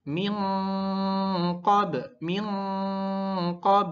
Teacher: Maka harus didengungkan dan disamarkan masuk ke huruf qof. Huruf qof karena dia letaknya di pangkal paling bawah ya, pangkal paling ujung sehingga harus lebih tebal daripada kaf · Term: ikfa hakiki